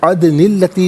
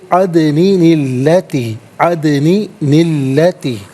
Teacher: نون کے بعد پھر ایک نون قطنی آئے گا، اور یہ ملانے کے لیے قرآن کریم میں استعمال ہوا ہے۔ تو اس طریقے سے پڑھیں گے عدنی التی، عدنی التی۔